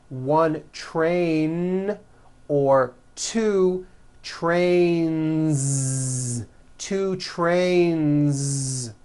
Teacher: Two trains with a voiced Z ending. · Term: voiced N